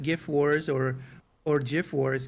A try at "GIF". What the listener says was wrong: it's very definitely a hard G, and yeah,